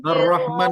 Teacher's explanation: Rohnya nggak boleh monyong, Bu. Nggak boleh monyong. Rohnya kan tidak berbaris dhammah. Jadi nggak boleh ar-roh, ar-roh.